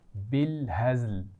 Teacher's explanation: یہاں پر یہ لفظ تھوڑا سا آسان ہے، بالهزل، کیونکہ اس میں ساری آوازیں باریک ہیں نا تو اس لیے آسان ہے. زا کے مخرج کا خیال رکھنا ہے، اس میں سیٹی ہوتی ہے